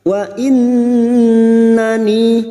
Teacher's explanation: Nun yang bertasdid gunna musyaddadah kita dengungkan selama tiga harakat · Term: gunnah musyaddadah